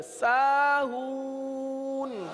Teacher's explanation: آخر میں نون کو ظاہر کریں، قلقلہ نہ کریں